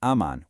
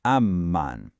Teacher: The shada is on the M. So, we don't say aman. We say ammon, hitting that m twice.